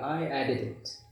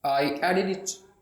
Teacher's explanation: आई एडिटेड इट की बजाय डी को ख़त्म किया, सो हम कहेंगे आई एडिड इट